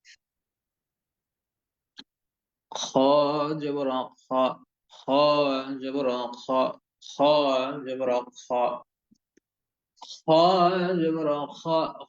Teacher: গলার শেষের ভাগ হইতে এই গইন এবং খ, এই দুইটি অক্ষর উচ্চারণ করতে হয়। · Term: খ অক্ষরটির উচ্চারণ